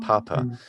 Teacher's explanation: that first pa has to have extra air on it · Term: aspiration